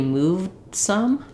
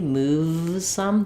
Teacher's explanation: you can hear how that V is short. I can't hold it